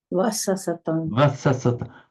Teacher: I think that was a bilabial V. Yes. So the lips lightly touching.